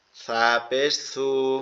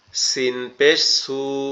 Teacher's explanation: সাটা হচ্ছে জিহ্বার আগা উপরের দুই দাঁতের আগার সঙ্গে লাগবে, আর সিনটা হচ্ছে জিহ্বার আগা নিচের দুই দাঁতের আগার সঙ্গে লাগবে